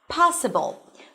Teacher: in the word possible, the stress falls on the first syllable